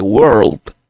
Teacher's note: En world suena definida la R, suena definida la L.